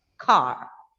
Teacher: In British, the British native speakers speak in such a way that the letter R is almost silent there.